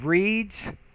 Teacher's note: we have the word reads and notice how the s here is pronounced as a z